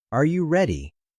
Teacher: Usually our voice goes up at the end of a yes or no question like are you ready? Your voice rises. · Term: intonation